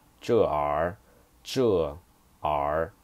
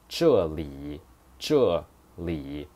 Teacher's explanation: it's just like the habit of people from northern China or people from Beijing. They like to say R at the end of their phrase.